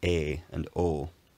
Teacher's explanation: The face and goat vowels are a lot smoother with less tongue movement, more like e and o, rather than a and o.